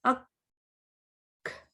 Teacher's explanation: इसमें भी देखें काफ पे टकराए, आप काफ के मखरज पे टकराए ऊपर तालू पे सख्त हिस्से पे, फिर एकदम आवाज भी बंद हो गई, सांस भी बंद हो गया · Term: हम्स